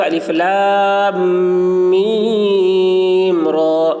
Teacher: میم کو کھینچتے وقت دوسری میم میں غنہ نہ ہونے پائے